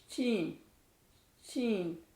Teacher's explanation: आप बिल्कुल अपनी जुबान का मिडिल हिस्सा ऊपर के मिडिल तालू को लगाएंगे।